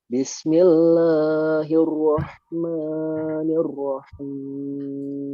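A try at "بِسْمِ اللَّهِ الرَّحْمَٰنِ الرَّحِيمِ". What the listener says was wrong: Diulang kembali, lamnya jangan tebal, tapi tipis. Bismillah.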